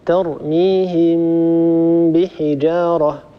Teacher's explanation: بأن نطبق على ميم وأن نفتح على باء من غير مجافاة بين الشفتين ومن غير كز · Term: إخفاء